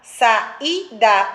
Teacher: Então, quando a pronúncia, o som é distinto, né? Eu não emendo uma vogal na outra no som, então é um hiato.